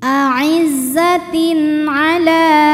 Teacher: Tin ada hukum idhar halqi, sebab ada tanwin kasroh menghadapi huruf halqi atau huruf tenggorokan yaitu ain, maka tanwin dibaca dengan jelas